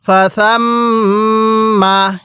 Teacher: মিমে নুনে তাসদিদ গুন্নাহ করা ওয়াজিব